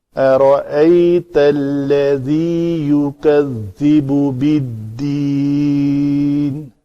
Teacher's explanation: ذال کا مخرج ہے نوک لسان دونوں دانتوں کے درمیان آئے اور یہ اس کو نرم ادائیگی رکھنی ہے